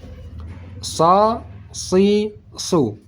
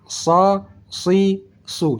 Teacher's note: Ini dia huruf sad, sa, si, su. Perhatikan ujung lidah tetap di belakang gigi seri bawah, pangkal lidah naik ke atas.